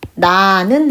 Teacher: 그럼 날른이 아니라 나는 해서 리을이 탈락하죠